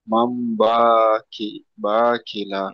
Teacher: নুন সাকিনের পরে বা এসেছে, তাই নুন সাকিনকে মিমের দ্বারায় পরিবর্তন করে একালিপ পরিমাণ গুণনা সহ পড়তে হবে, একে ইকলাব বলা হয়।